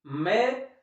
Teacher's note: दिक्कतें कहां आती हैं, जैसे हमने एक सर्वनाम शब्द है, उत्तम पुरुष सर्वनाम है, मैं शब्द लिखा और मैं शब्द पे हमने क्या लगाया है, मैं, में आई की मात्रा है। दोस्तों, मैं में आई की मात्रा है और इस आई का जो रूप है वह कैसा है, अनुनासिक रूप है।